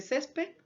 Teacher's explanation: es una palabra que tiene la mayor fuerza de voz en la penúltima sílaba